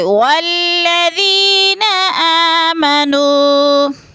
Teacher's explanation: والذی کو تھوڑا سا لمبا کر کے پڑھیں گے، آمنو کو بھی کھینچ کر پڑھیں گے